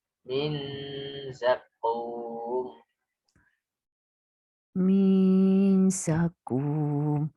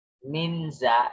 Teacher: nun sukun bertemu za itu memang ikhfa, tapi ada unsur gunnah. Ya, maka menahannya itu agak lama. Min za untuk memunculkan sisi samar dari nun.